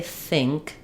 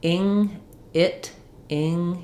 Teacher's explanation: It doesn't sound quite the same as it does in other contexts, but it is the I vowel. It should be a lax vowel. It's just maybe a little bit higher, more nasal because my back of my tongue is lifting, getting ready for the ing, for the ng sound. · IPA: /ɪ/